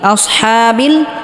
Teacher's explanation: হাকে হালকা গলার মধ্যে চাপ দিয়ে উচ্চারণ করতে হবে